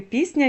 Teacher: ні впливає на с твердий і перетворює його на м'який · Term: уподібнення приголосних